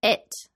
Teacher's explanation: British English speakers are more likely to aspirate that T sound and fully say it at the end of sentences.